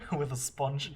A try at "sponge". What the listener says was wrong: Pronounce the G.